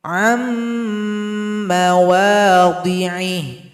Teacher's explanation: maka dibaca dengan idgham, dibaca lebur serta berdengung.